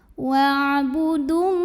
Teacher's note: alif lamnya ini tidak kita baca atau kita masukkan langsung ke lam berikutnya, disebut dengan idgham syamsi.